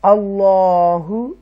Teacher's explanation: یہاں اللہ کے نام کو تفخیم کے ساتھ پڑھیں گے